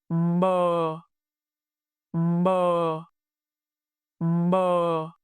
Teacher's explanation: The initial consonant is m. Your lips close, then release with voice.